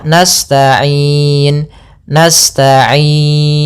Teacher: Maka kita boleh memanjangkan lafal ain ya. Boleh dua harakat, boleh empat harakat, dan boleh pula enam harakat. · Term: mad arid lisukun